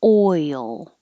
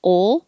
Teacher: Oi, your tongue rises to the E position. And then when you go from the E to the L, you let your tongue slide down and it makes a Y. So it's almost two syllables.